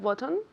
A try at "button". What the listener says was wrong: Not bottom. Button con N al final, yeah?